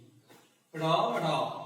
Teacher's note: তো র, র উচ্চারণের সময় কি হয়? যে জিহ্বার অগ্রভাগের যে নিচের অংশটা সেটা হচ্ছে সজোরে তাড়না সৃষ্টি করে বা আঘাত করে উপরের পাটি দাঁতের সাথে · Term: তাড়নজাত ধ্বনি